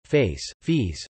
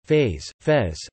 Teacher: This is known as pre-fortis clipping. Thus in the following word pairs the first item has a shortened vowel while the second has a normal length vowel